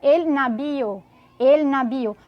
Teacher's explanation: a letra V em alguns países vai ter o som de bebê